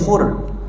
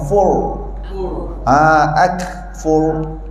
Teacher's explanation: Tu ra nipis, fur. Bila yang namanya ra tebal, lidah ke belakang